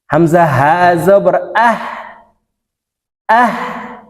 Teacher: আও হামজা হা জবর আহ হলো শুরু থেকে হা উচ্চারণ হবে হার মাখরাজ হলকের শুরু থেকে